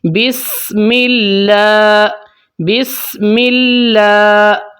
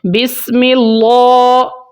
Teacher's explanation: اگر میں اس کو ایسے پڑھتا ہوں بسم اللہ، یہ ہو گیا ہے موٹا، یہ غلط ہو جائے گا۔ اس کو آپ نے باریک پڑھنا ہے کیونکہ اللہ کی لام سے پہلے زیر ہے